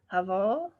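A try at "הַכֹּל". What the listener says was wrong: Hakol. Ka with a dot in the middle. Hakol.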